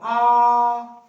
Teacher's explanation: विवृत मतलब पूरा खुला हो, आ पूरा खुला है